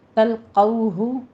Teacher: ان تلقوہ میں بھی نون ساکن کا قاعدہ اخفا حقیقی ہے، یہاں بھی 2 کاؤنٹ کرنا ہے اور قوف کو پر پڑھتے ہوئے واو لین ادا کیجیے